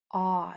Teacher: It's kind of like a short O sound, like an olive, but it's even deeper. Your jaw drops even more. Aw. It's a deep, deep aw sound.